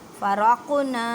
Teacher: قاف پر کلکلا کرنا ہے، مینس کہ ہلا کر پڑھنا ہے